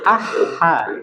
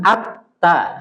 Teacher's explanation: huruf Ha dia lemah ah ha iya Lemah dia ah ha beda dengan ATT ta agak benar-benar ditekan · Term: huruf yang lemah